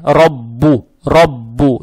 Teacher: «Ра» читаем твердо, то есть «ра», «ра». Далее стоит буква «ба», она же удваивается с «даммой».